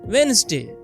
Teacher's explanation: People try to say every letter, but it is pronounced Wednesday. The d in the middle is silent.